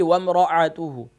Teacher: اور دوسرا حمزہ اور عین میں فرق رکھیے، جی یعنی کہ جہاں مثال کے طور پر آپ نے یہاں تلاوت کی وَامْرَأَتُهُ، یعنی کہ حمزہ ہے تو حمزہ باٹم آف تھروٹ سے ادا ہوتا ہے، یعنی کہ گلے کے نیچے والے حصے سے، اقصی حلق سے